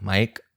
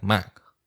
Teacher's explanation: the important detail that the Chinese mai has this even older pronunciation with what's called a velar stop, a k sound